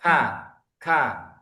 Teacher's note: untuk yang kaf ini pangkal lidahnya turun pangkal lidahnya turun